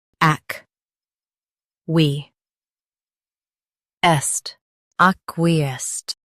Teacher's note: Stress ac and keep we light. The sked is soft.